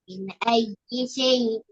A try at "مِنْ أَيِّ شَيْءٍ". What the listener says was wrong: மின் ஐயி, மின் ஐயி, நூண்ட சவுண்ட் எடுக்கணும். மின் ஐயி.